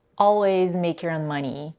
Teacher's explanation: she connects the words so much that the diphthong o in the adjective own is reduced and the word sounds almost like This happened because she blends the whole phrase, your own money, and makes your own sound like one word, your own.